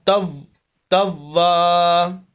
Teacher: واو کے اوپر شد سخت کیا اور آواز کو روکا